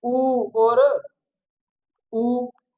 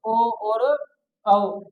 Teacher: जिनके उच्चारण में होठों की आकृति हमारी क्या हो जाए? पूर्ण रूप से गोल हो जाए, पूर्ण वृत्ताकार